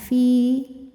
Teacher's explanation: ya sukun didahului kasrah maka panjang dua harakat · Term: Mad thi'i